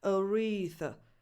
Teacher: Then you have a voiceless TH, as in the word think. Aretha. And another schwa at the end.